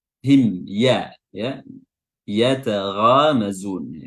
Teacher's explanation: huruf mim yang sukun bertemu dengan huruf ya, huruf mimnya dibaca jelas, dibaca izhar ya, namanya izhar syafawi.